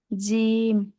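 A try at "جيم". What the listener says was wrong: জিম। শক্তভাবে উচ্চারণ করতে হবে। জিম। বলেছি, কোথা থেকে উচ্চারণ হবে সেটা একটু দেখে নিবেন ইনশাআল্লাহ।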